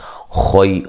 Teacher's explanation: خا کو موٹا ادا کریں گے اور یہ یا لین ہے